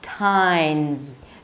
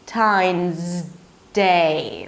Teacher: Your tongue is already up there, so don't bring it back down. Move from the Z to the D immediately.